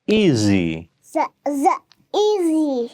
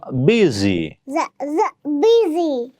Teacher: at the middle of the word we can get the sound z. So z z z z z easy.